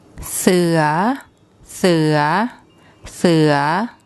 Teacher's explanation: There's no tone mark. So for a high class initial consonant and a live syllable, we use a rising tone.